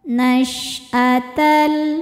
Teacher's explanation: Shin punya ciri khas sifat yang tidak dimiliki huruf lain namanya tafashi. Tafashi artinya menyebarkan angin di dalam mulut.